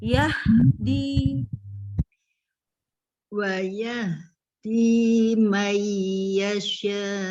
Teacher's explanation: Jangan ya-nya yang dipanjangkan, tapi ha-nya.